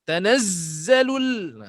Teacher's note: Tanazz kan kuat. Dia bunyi kuat. Ada buzzing.